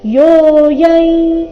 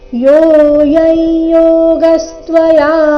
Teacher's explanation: ಅನುಸ್ವಾರದ ಉಚ್ಚಾರಣೆ ಇಲ್ಲಿ ನಾಸಿಕಾ ಯ ಬರಬೇಕು